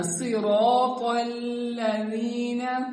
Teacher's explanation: صراط اس کو پر پڑھنا ہے, لام کو باریک پڑھنا ہے, لام کو پر نہیں پڑھنا